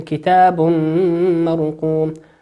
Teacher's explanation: وقوله كتاب مرقوم، الميم تنوين أتى بعده حرف الميم، والميم من حروف الإدغام بغنة فيغن بمقدار حركتين